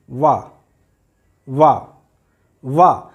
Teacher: हमारे दांत ऊपर वाले होंठ को स्पर्श कर रहे हैं, इसलिए इसका उच्चारण स्थान है दंत और ओष्ठ, दंत ओष्ठ।